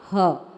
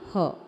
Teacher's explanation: यह देखिए, संस्कृत में जो विसर्ग लगा होता है, विसर्ग समझते हैं, पीछे दो बिंदी, विसर्ग को कुछ इस प्रकार से पढ़ते हैं जैसे अक्षर के पीछे आधा ह